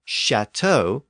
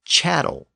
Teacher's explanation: with words like Castle from castellum and cattle from Capital but sometimes that initial consonant shifted to a CH sound or an sh sound